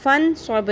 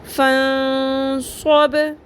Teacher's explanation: غنہ کا مطلب ہے ناک کی ہڈی میں آواز کو ٹھہرائیں گے بھی، لمبا بھی، یعنی کہ نون ساکن کی آواز کو چھپاتے ہوئے لمبا کریں گے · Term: اخفا